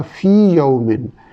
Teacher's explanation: اسی طرح فی یومن، یہاں یا ساکن کے بعد یا ہے لیکن ادغام اس لیے نہیں ہو رہا کہ یا ساکن جو ہے وہ یا مدہ ہے